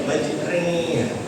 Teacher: Nah kalau taklil itu bibirnya biasa majriha sore majriha. Nah kalau imalah agak meringis menjadi majriha